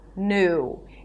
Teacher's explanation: you don't have to add that Y sound. You can just say new, an N sound and then U